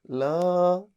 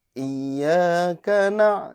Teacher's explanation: Yaitu A ya, jangan sampai lo, tapi la ya, jadi dibuka saja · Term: fathah yang tipis